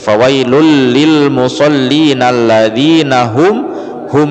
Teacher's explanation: izhar syafawi, Pak ya, tidak dengung